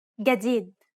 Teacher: In Egyptian Arabic, this letter is pronounced like a regular English G, as in game.